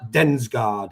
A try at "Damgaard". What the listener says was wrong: Yeah, you're fairly close. It's a Damgaard, so it's like the guy who plays for Brentford without the S.